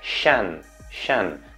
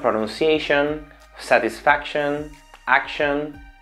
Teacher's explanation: Hay una shua, el sonido sh y el sonido de la N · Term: sh suave